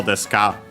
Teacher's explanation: You might have heard the accent on the so.